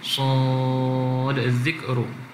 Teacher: Huruf sad ni tuan-tuan di hujung dia ada dal, maka tidak dimasukkan pada zal. Sad zikru, dia tidak masukkan huruf dal kepada zal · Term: izhar